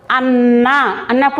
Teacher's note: న అనేటువంటిది రెండు సార్లుగా మనం ఉచ్చరిస్తున్నాం కదండీ నకారం ప్లస్ నకారం పొల్లు తోటి ఉంటుంది తర్వాత న ఒత్తు చూపిస్తాం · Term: ద్విత్వాక్షరం